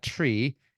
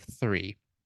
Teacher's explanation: interdental fricative that's the th sound so there are some uh so-called native accents of English that don't distinguish between T and th so some people uh some accents will say uh tree instead